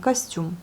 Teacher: Et à la fin, nous avons l'accent sur la syllabe, la dernière syllabe, donc costume.